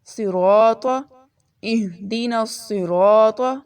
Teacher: اس سے نیکسٹ اہدنا الصراط، اس میں صاد آ رہا ہے، صاد کی آواز موٹی ہوگی اور اس کو سین کی طرح نہیں پڑھنا، یہ صاد موٹا ہوگا، سین باریک پڑھا جاتا ہے۔